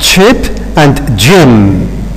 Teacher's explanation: What is an affricate sound? Is a stop followed by a fricative sound. And they have got more or less the same place of articulation.